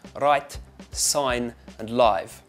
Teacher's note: So when we're looking at the South African accent, I think the biggest sound that helps me as an actor is the I sound in write, sign, and live. It becomes more like an oi, a bit like the oi in oil and boy.